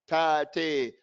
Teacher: That change of the sound, ta te, that just comes from moving up the middle of your tongue alone.